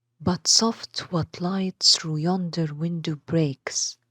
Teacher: each line includes one unstressed syllable followed by a stressed syllable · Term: iambic foot